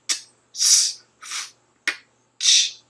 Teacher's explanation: they create turbulent, noisy airflow, and you can hear this as acoustic noise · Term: obstruent sounds